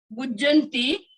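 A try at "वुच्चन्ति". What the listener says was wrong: वो चंती है, च है, देखिए ज नहीं है, च है।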